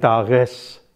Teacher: Now, the problem with the German form such as tag and tages, as has been pointed out by some phonologists, is this: that on the surface you get k, but you don't get a g. The g is found as a fricative, something like r.